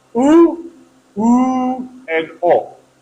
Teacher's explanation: all three are round vowels because your lips are rounded